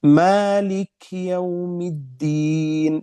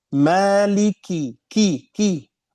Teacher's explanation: harus kita menjelaskan kasratnya kalau tidak jelas menjadi sukun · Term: kasrah